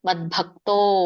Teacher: ದ ವ್ಯಂಜನ ಇರೋದ್ರಿಂದ ದ ಕ್ಕೆ ಬತ್ತು ಬಂದಾಗೆ ಓದಬೇಕು